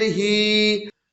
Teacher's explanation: کھڑی زیر کو تھوڑا کھینچ کر پڑھیں